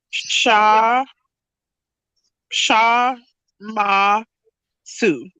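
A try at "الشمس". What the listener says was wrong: Okay, so this one has a sukoon. So I mean it doesn't have a vowel, so it's shamsu. And so we just shamsu.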